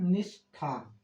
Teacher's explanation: तो शब्द जाके बनता है निष्ठा। क्योंकि दंत स के दंत स का मूर्धा स हो गया। थ का ठ हो गया।